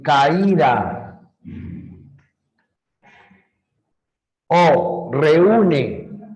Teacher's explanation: la mayor fuerza de voz recae en la vocal cerrada y lo que debió haber sido un diptongo se rompe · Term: hiato acentual